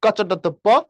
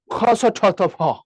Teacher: এটা হচ্ছে অল্প প্রাণের লাইন, পরেরটা হচ্ছে মহাপ্রাণ, এটা আবার অল্প প্রাণ, এটা আবার মহাপ্রাণ, এটা আবার অল্প প্রাণ।